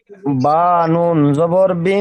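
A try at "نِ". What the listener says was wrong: বা জবর নাই জের এসেছে নিচে খেয়াল করেন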